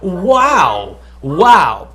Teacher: it's the lips touching each other but you're not pursing your lips you're using the wet part of your lips that you don't